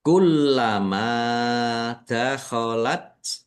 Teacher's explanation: lamnya dibaca dobel ada tasdidnya ditekan dan ditahan biar tampak dobel